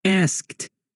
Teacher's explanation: o correto para o passado de ask é asked, que pode soar como T no final, especialmente depois de sons desvozeados